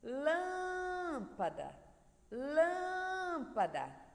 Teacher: então Lan é mais forte dessa palavra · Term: sílaba tônica